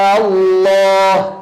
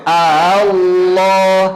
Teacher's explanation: Tashil itu artinya adalah memudahkan, yaitu mengubah hamzah menjadi hamzah yang berada di antara hamzah dan madu mengubah hamzah yang syiddah menjadi hamzah yang rikhwah